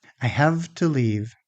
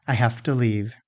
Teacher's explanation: So we assimilate the sound and we devoice it. The v changes because it's next to the voiceless t. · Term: devoicing